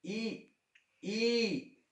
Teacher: ऊपर जो गड्ढा सा आकाश जो है वहां हल्की सी टच करती है। ई ई, ये तालू वो स्थान है ई का और बड़ी ई का।